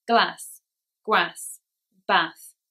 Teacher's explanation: in the north of England, words like glass, grass, brass, they will be said with a, not r. This is a regional difference.